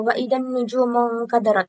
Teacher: Nujumun, alif lam bertemu nun, itu alif lam syamsiyah. Cara membacanya meleburkan alif lam ke huruf syamsiyahnya. Dan nun di sini itu gunnah. · Cara membacanya itu meleburkan mim dan nun dengan mendengungkan suara dari pangkal hidung dan panjangnya itu 2 harokat atau 1 alif